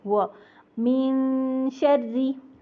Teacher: वाव को होंठ गोल करके पढ़ना है, उर्दू की तरह दांत रख के नहीं पढ़ना होंठों पर। व होंठ गोल करके, गोलाई से, व मिन शर्री।